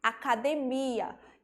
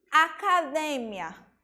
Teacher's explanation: então eu tenho a sílaba tônica do português a última e em espanhol eu tenho a penúltima sílaba ela mudou de lugar Mesma coisa a palavra em português a